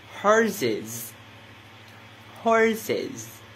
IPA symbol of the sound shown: ɪz